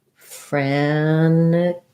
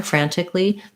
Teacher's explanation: So I just said it the way a lot of Americans say it, which is I left the T out and said it more like frantically.